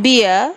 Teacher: the glide begins in the position for e and moving down and back towards uh the leaves are neutral but with a small movement from spread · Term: centering diphthongs